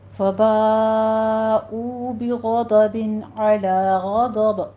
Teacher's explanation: نہیں بنانا، فباؤ نہیں کہنا، فباؤ واو مدہ ہے، ٹھیک ہے۔ بغضب میں غین بھی پر ہے، ضاد بھی پر پڑھا جائے گا